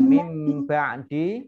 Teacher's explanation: nun sukun bertemu dengan huruf ba, bacaan iklab, dibaca mim terlebih dahulu baru masuk ke huruf ba, ditandai dengan huruf mim berdiri kecil.